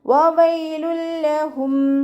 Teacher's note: 2 വാവിനെയും ചുണ്ടുകളൊന്ന് circle ചെയ്തിട്ട് ഉച്ചരിക്കുക. പല്ല് ചുണ്ടിൽ തട്ടാത്ത രൂപത്തിൽ വെക്കുക കേട്ടോ.